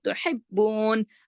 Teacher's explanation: نون کی حرکت کو روک دیں گے اور با پہ سختی سے پڑھیں گے جمع کے، تاکہ باقی تشدید یہ ظاہر کر رہی ہے کہ یہاں دو با ہیں. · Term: وقفہ